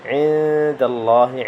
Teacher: عند میں بھی اخفاء ہے، غنہ کریں یہاں پہ